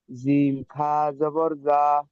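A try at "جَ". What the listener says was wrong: জিমটার তিন আলিফ টান ছিল, এই অক্ষরটা, এই যে হরফটা আছে এর তিন আলিফ টান, জিম খাড়া যাবার যা, এক আলিফ পরিমাণ টান দিয়ে বলেন, জিম খাড়া যাবার যা।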